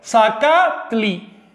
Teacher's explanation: ¿Dónde estaría la fuerza de pronunciación? El acento en la segunda sílaba